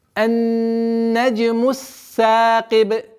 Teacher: при остановке дамма у буквы Б аннулируется и уходит в сукун со свойством калкаля.